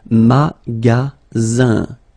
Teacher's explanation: Then you get the sound Z, alright? And then the ending here is IN, so it's nasal, it goes in your nose, and it's un.